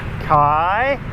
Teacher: the first word uses a high class consonant and then a a live syllable so that should actually have a rising tone